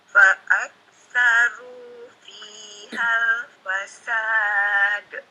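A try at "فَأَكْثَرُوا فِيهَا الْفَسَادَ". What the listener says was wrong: Iya, jadi fihal gitu ya, pendek, jadi enggak fiha gitu.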